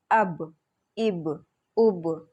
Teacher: دونوں ہونٹوں کے گیلے حصے سے ادا ہوتا ہے